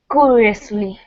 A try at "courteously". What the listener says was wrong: Courteously. Courteously. Yeah, make sure you get this T. Courteously.